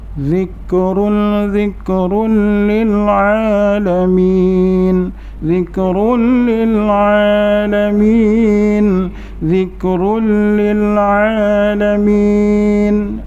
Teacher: Lam tu di atasnya ada tanda sabdu, terus masuk. Hukum bacaannya idgham bila gunnah, kerana tanwin bertemu dengan huruf idgham lam